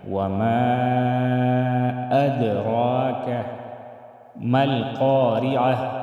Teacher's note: اد دال میں ہم قلقلہ کریں گے